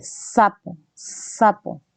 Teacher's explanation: hay un empuje en el ápice de la lengua hacia la zona alveolar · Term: alveolares